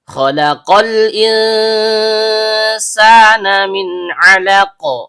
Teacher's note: Kha, bagian atas tenggorokan. Lam, ujung lidah bertemu dengan bagian depan langit -langit mulut. Kemudian qaf, pangkal lidah naik ke langit-langit di atasnya.